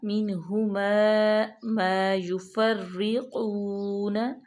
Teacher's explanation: قاف جو ہے وہ مستعلیہ میں سے ہے، اور اس کو موٹا پڑھیں گے اور واو کو لمبا بھی کریں